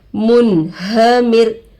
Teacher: नूने साकिन के बाद हुर्फे हलकी में से ह आकर है, नून के आवाज़ को जाहिर करके बगैर गुन्ना के पढ़ेंगे. इसको इजहार कहते हैं. · रो पर जज़म आकर है, पिछले वाले हरफ से मिलाकर पढ़ेंगे. रो पर जज़म आकर है, रोए साकिना होगा. रोए साकिना से पहले जेर आकर है, रो को बारीक करके पढ़ेंगे